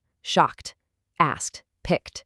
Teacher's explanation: If a present tense verb ends in a voiceless sound, like the hard K in shock, the past tense ed actually assimilates to match it. It adopts a voiceless t sound. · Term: assimilation